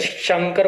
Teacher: शंकर को बोलते समय जीभ आपकी शौ बोलते समय तालु को टच करेगी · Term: तालव्य शौ